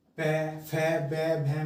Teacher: पै वर्ग में होठ आपस में मिलेंगे, प फ ब भ में। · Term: ओष्ठ्य